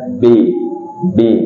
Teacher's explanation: kalau di huruf hijaiah b b gak ada angin termasuk suara yang ditahan